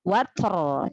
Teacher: Ro sukun karena wakofnya dibaca tafkhim, dibaca tebal ya. Jadi tebalkan lagi ro yang harus dibaca tebal.